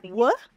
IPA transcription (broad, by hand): w